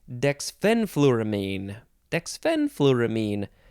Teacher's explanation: the second syllable is emphasized